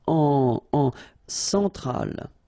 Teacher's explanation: Centrale, remember, E-N, nasal, so it goes in your nose